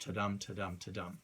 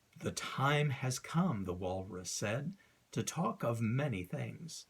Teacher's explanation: Iambic means that the words in a poem are arranged to create a ta-dum, ta-dum, ta-dum rhythm as you read it aloud. There's an unstressed syllable followed by a stressed syllable, unstressed, stressed, unstressed, stressed, ta-dum, ta-dum, ta-dum.